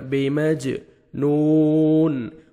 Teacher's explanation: واو مد ہے، 1 سیکنڈ نون کو کھینچنا ہے اور لاسٹ میں نون ساکن ہو جائے گا جب سٹاپ کریں گے۔